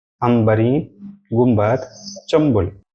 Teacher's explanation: اسی طرح کچھ الفاظ ایسے ہوتے ہیں جب نون تو لکھا جاتا ہے، اس کے بعد با آنے کی وجہ سے نون کے بجائے میم پڑھا جاتا ہے